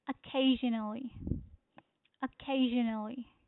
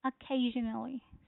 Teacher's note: the stress is on second syllable